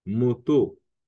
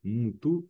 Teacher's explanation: Le O en lingala peut devenir U.